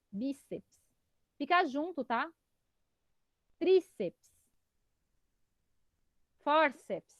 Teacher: A mais forte é a penúltima, que é o bi, o tri e o for